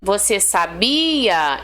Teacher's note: esse bi acaba sendo mais forte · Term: paroxítona